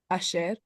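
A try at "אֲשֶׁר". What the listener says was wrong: Good. Asher.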